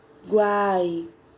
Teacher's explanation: A gente percebe quando falamos, o som das 3 vogais se pronunciam junto. Então, quando a gente separa a sílaba, essas 3 vogais ficam juntas, ó. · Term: tritongo